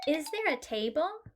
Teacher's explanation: instead of there is a table we now have a rising intonation